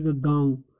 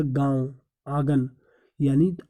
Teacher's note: ऐसे स्वरों का उच्चारण जिनका नाक और मुंह दोनों से हवा निकले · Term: अनुनासिक